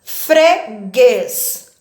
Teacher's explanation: a última sílaba é a mais forte · A sílaba tônica aqui é o guês. Ela é uma palavra também oxítona.